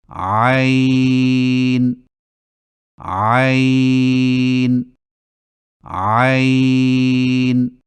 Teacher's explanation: عین کی درست آواز کی پہچان یہ ہے کہ ادائیگی کے وقت گلے میں کچھ دباؤ سا محسوس ہوگا، یعنی عین عین عین.